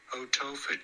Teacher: This is usually said as otopha. You do want to stress on the second syllable, the toe syllable.